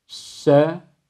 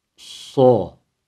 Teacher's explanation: Ama sin harfinde ne ıtbak var ne istila var. Dolayısıyla ince bir harftir. Ama sad harfimizde hem ıtbak var hem de istila sıfatı var. Kalın okunması gerekiyor.